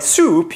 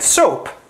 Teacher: The big articulator that moves around to give us our different vowel configurations is the tongue. If you say a word like soup, you can feel that the tongue is higher up than when you make the vowel in a word like soap